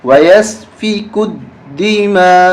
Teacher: کاف کو دال کے ساتھ ملاتے ہوئے سختی کے ساتھ پڑھیں گے